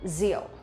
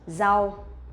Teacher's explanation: when we pronounce the R sound, we will not pronounce like R in English, but we pronounce like Z sound in Vietnamese